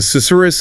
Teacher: those repeated sounds, they create this hushed, almost breathy, sibilant effect. Sibilant, like hissing, but gentle here.